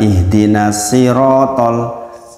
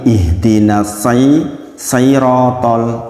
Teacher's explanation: Antara sirotol pakai sin dengan sai, sama masalahnya meletakkannya di gigi seri, tapi satunya tebal, satunya tipis. Kalau sin itu tipis, kalau sod itu tebal.